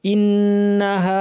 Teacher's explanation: নুনের উপর তাশদিদ লম্বা গুন্না করতে হবে